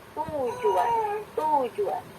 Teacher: Namun ketika pada kata tujuan, ketika teh dilafalkan dan teh lidah akan melafalkan bunyi u dan j dan u, gitu ya. Tujuan, ada semacam pergerakan penarikan lidah dari depan ke belakang.